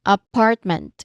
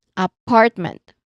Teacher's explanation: It is stressed on the second syllable. Part.